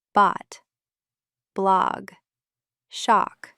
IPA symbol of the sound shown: ɑ